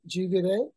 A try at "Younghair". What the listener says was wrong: Young, it's like a Y, young hair. Younghair, young hair. Like my hair is young.